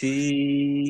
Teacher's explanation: আর সিনের মাখরাজ একই আমি আপনাদের দেখায় দিলাম যে জিহ্বার মধ্যখানকে উপরে যে তালু আছে তালুর সাথে চেপে ধরবেন